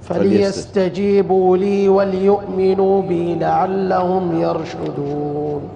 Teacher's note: انتبه للهمزة، لا تقلقلها، يعني الهمزة فليستجيبوا لي وليؤمنوا بي لا تطلع القلقلة هذه.